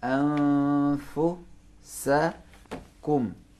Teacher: नून को फे के मखरज में छुपाएंगे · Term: छुपाना